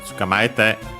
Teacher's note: The u, by the way, of tsu, I barely heard if at all because it's between our voice consonants.